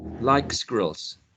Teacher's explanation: sliding from k, a velar position, to s, an alveolar, the alveolar ridge, quite a long distance, like squirrels.